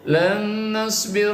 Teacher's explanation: Idgham biguna. Nun mati bertemu nun ya, maka nun mati dibaca guna dengung